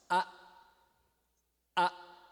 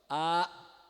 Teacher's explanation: passa então por exemplo eu posso fazer uma vogal a e posso fazer uma vogal a terminando com glotal ele vai cortar o a